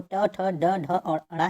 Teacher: मूर्धन्य व्यंजन जो है वो ट, ठ, ड, ढ, और ण है